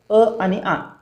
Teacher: स्वराचं उच्चारण कसं होतं, तर कंठ उच्चारानुसार असणारे स्वर कोणते, तर ते दोन आहेत, अ आणि आ. अ आ यांचा उच्चार कंठातून होतो म्हणून त्यांना कंठ्य स्वर असे म्हणतात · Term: कंठ स्वर